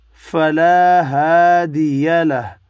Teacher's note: دو الف مدہ ہیں, ایک ایک الف کی مقدار میں کھینچ کر پڑھنے ہیں. وف کی صورت میں ہا ساکن پڑھنا ہے.